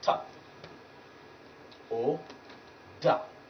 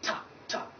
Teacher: it is the tip of the tongue that will raise and then block the air up there around the roof of the mouth